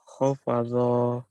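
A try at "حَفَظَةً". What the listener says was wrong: Ha, bukan kho, ha.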